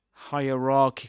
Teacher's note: this word has two stresses. A primary stress on ra and a secondary stress on the first syllable, hierarchical.